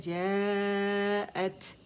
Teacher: یہاں پہ ہمارے پاس 4 کاؤنٹس کھینچنے کا ہمارے پاس مد متصل واجب ہے تو اس سے 4 کاؤنٹس کھینچیں گے ہم